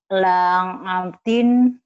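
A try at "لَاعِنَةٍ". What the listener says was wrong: La'a, bukan Langadin ya. La'adin. La'adin. A-nya panjang juga.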